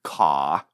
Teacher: Accents that drop an R at the end of a word like ka are called non-rhotic.